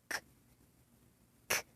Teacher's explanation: To create that sound, air briefly prevent from leaving the vocal tract when the back of the tongue lifts and press against the soft palate at the back of the mouth. It is unvoiced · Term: k sound